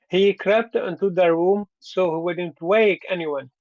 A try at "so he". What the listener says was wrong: So we. Yeah, I have to hear both of those sounds. It sounds like you're only pronouncing one part. So-y. room so he